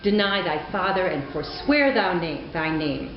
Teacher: each one of these is a unit of two beeps two syllables an unstressed syllable followed by a stressed syllable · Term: iambic pentameter